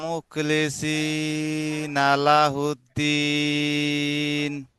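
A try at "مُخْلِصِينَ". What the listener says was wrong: তো এখানে মুকলিম, মুখ খটা কাফের মতো হয়ে গিয়েছে, মুখ, মুখ, জি, হ্যাঁ, খ, মুখলিসিনা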